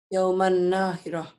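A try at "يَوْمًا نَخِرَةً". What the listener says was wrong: Pendek. Yauman Nakhirah. Gak ada yang panjang. Nah, apa hukumnya? Kenapa? Gak ketemu alif. Gak dianggap. Karena tanwin ketemu nun, maka bacanya jadi gimana? Dan disertai dengan dengung.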